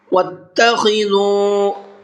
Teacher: خا کو حلق سے نکال کر کے پڑھنا ہے اور دال کو نرمی کے ساتھ میں پڑھنا ہے، سافٹ کر کے پڑھنا ہے۔